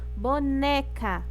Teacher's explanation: É a sílaba tônica. Boneca, o né é a sílaba tônica